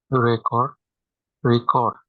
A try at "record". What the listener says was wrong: The stress. Not only that we change the pronunciation of E, but also the stress. Record, record.